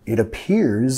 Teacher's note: vinculando con la re suave